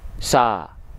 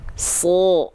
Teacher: Huruf shad ketika dia berbaris atas alias berharokat fathah, maka bunyi vokalnya kan bukan sa, tapi so. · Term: huruf yang tebal